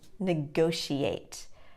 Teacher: in the word negotiate the second syllable is stressed